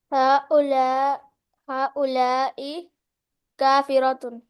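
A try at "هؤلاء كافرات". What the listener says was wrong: ना। हाँ उलाई काफिरातुन, बस सारी है ना, तो उसको अलिफ को जाहिर किया करें कि नजर आए।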